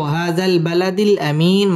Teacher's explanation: আরজি তিন আলিফ টান দিয়ে পড়তে হবে